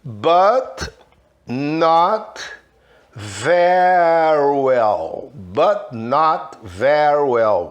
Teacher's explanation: Reparem, eu não falei o T com força, but, dei aquela travadinha. Not, olha que eu não falei not, não falei but, eu não falei not, eu falei but, not very well.